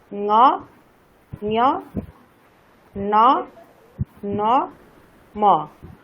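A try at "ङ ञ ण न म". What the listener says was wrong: না, এখানে একটু পার্থক্য ঠিক বোঝা যাচ্ছে না, পার্থক্যটা আরো স্পষ্ট করতে হবে। ঙ, তারপরে যখন ঞ যখন হবে তখন তো তালু থেকে হবে, তাই না? প্রতিটা বর্ণই হচ্ছে নাসিকাতে উচ্চারণ হবে, কিন্তু কণ্ঠ, তালু, মূর্ধা, দন্ত, ওষ্ঠ এগুলি তো পাল্টাবে।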